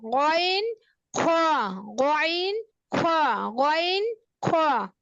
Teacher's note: হলকের শেষ ভাগ হইতে গইন খ